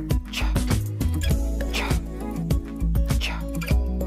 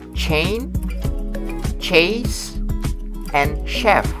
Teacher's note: It means that when we speak the sound, our vocal cords are not vibrating during the articulation of the consonants. That's why we called it voiceless. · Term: voiceless alveopalatal affricate